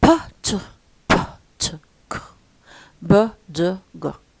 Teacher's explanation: The first 3 are voiceless. The second 3 are voiced. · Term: plosive consonants